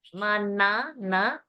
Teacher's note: Mana, na, tongue at the teeth.